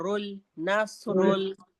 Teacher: फिर नून को स्वाद से मिलाया हमने तो आवाज आएगी नस, नून बारीक पड़ा जाएगा और स्वाद को मोटा पड़ा जाएगा। नस, फिर रॉ को लाम से मिलाया और रुल, नसरुल, मोटा पड़ा जाएगा रा